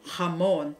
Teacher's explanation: the Spanish will pronounce the J writing as the H sound